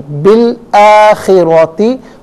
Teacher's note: रा पर ज़बर है, रा को पुर करके पढ़ेंगे · मिलाकर पढ़ने की सूरत में बा को लाम के साथ मिलाएंगे, दरमियान से अलिफ यानी हमज़ा को हज़फ किया जाएगा।